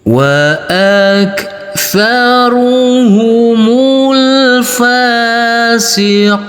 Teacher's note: untuk yang enam harakat kita kasih Irama Nada turun